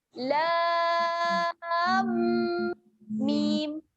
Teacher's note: Jadi alif lam, Dia bunyi pada lam, nak masuk ke mim tu, dia ada dengung 2 harakat.